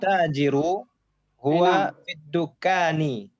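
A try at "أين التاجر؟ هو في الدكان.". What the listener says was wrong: Masya Allah.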